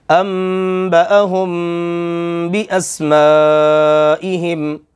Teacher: اب یہ جو پہلے والی انبأہم کی میم ساکن ہے، اس کے بعد با ہے، غنہ ہوگا۔